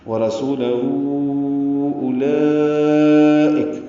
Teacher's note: ورسولہ الٹا پیش ہے، اور اس کے بعد حمزہ آنے کی وجہ سے مد منفصل بنے گی ، یہ مد صلہ کبریٰ ہو جائے گی۔ ورسولہ اولئک پڑھیں